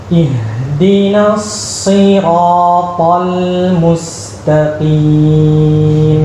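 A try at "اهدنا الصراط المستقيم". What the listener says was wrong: Baik, kita mau waktu baca ra lidahnya turun. As-sira. Lidah masih naik. Kita mau lidahnya turun, bukan as-sira. Coba buka mulut lebih. Buka. As-sira. Kalau buka, lidah kurang di langit-langit atas. Bukan. Sekarang yang naik tengah lidah. Ya, tengah lidah nggak usah naik. Yang naik bakal lidah untuk suara yang tepat.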